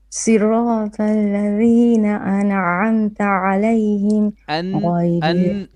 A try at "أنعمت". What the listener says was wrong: An'amta. Don't bounce the noon. You said an'amta. Again.